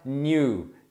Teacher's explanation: normalmente não tem a ênfase no i, tá? Porque é uma semivogal nesse caso. Então você fala new, tem o sonzinho do i, mas a a ênfase tá no u.